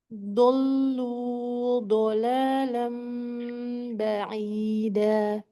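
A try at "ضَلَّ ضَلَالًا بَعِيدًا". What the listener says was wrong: Panjang pendeknya lagi. Dhallu dhalala. Jangan terlalu panjang di lu. Itu jangan terlalu panjang.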